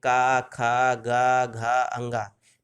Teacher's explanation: तो जो आवाज़ आती है वो कंठ से आती है और हमारी जिह्वा कहीं भी टच नहीं करती मुंह के अंदर, इसलिए इसका उच्चारण स्थान कंठ हो गया।